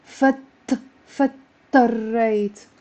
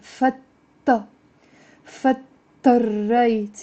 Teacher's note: the d and t kind of we're merging them together in a shadda